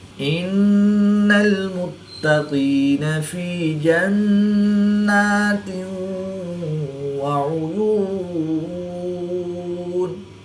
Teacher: نون مشدد میں ہمیشہ غنہ ہوتا ہے تو یہاں پر ہم غنہ آنی کر کے پڑھیں گے۔